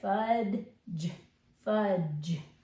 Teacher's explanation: hear that D it kind of Blends in with the g e so really it sounds more like f fudge but it is there fud fudge but it kind of Blends